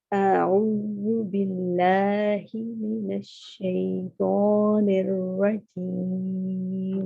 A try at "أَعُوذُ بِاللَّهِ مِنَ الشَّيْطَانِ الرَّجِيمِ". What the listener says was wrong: دوبارہ من الشیء، پا پورا کھڑا رہے، منہ کہیں پہ بھی گول نہیں ہو. پا کی آواز آ رہی تھی مجھے ابھی بھی نا.